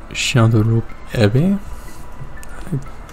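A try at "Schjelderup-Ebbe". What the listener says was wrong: I feel like the second E is pronounced.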